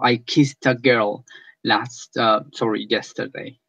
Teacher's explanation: So if you place your fingers here and you say, "Oh, besé a una chica ayer," I kiss, and you elongate that last S sound, and there is no vibration because S doesn't have any vibration. Then you will know that kiss in past will be pronounced with T at the end.